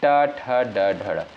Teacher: ट वर्ग के अंतर्गत जो वर्ड आपके आते हैं जैसे ट, ठ, ड, ढ, ड। इनका उच्चारण दोस्तों मूर्धा से होता है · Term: मूर्धन्य व्यंजन